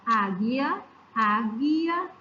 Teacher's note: Águia é como se o U não existisse. Ele é essencial para a formação desta palavra.